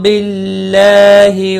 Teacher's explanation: اللہ کا لام باریک ہوگا زیر کی وجہ سے، اس کے اوپر کھڑی زبر بھی ہے، ایک الف کے برابر کھینچ کر پڑھیں۔